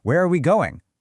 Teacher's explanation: But when I respect the road sign, I distinctly raise my tone slightly at the very end. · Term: rising tone